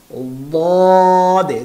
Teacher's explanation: এর সিফাত হচ্ছে ইস্তিআলা, অর্থাৎ মোটা করে উচ্চারণ করতে হবে দদে। আমি কিন্তু দদ বা জদ কোনোটাই বলতেছি না, দদে, জিব্বার গোড়া, দদে, জিব্বার গোড়া লাগাচ্ছি আমি, আমি উভয় সাইড ব্যবহার করতেছি, দে।